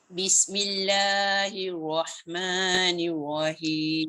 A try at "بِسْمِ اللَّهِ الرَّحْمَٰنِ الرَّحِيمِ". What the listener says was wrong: Dekat la dengan ma, perasan tak? Tu dia jadi 3 harakat. Buat 2 je.